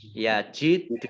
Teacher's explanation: Dal sukun bacaan kolkolah, dibaca memantul ditampakkan pantulannya.